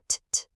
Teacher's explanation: You just tap your tongue on the roof of your mouth right behind your teeth.